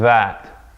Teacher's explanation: The difference is that for the dhaal, you're using your vocal cords on that sound.